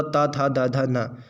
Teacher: जैसे तावर्ग पूरा ता था दा धा ना, ये क्या है, दंत से आ जाते हैं